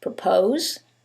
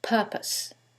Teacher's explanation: in the first one, it's the second syllable that's stressed, and in the second one, it's the first syllable, and that changes the pronunciation completely. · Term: word stress